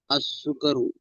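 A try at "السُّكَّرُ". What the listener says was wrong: सुकरु नहीं, सुक्करु, अस्सुक्करु, काफ पर तशदीद लिखा भी हुआ है, अस्सुक्करु।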